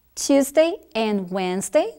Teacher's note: No caso do dia da semana, sempre será a primeira sílaba, o que significa que você não vai enfatizar a palavra day, vai ser menos enfatizado. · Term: stress syllable